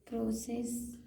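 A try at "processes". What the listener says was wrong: और सी को सी से प्रोसेसेस, क्योंकि लास्ट में एस भी है ना, प्रोसेसेस।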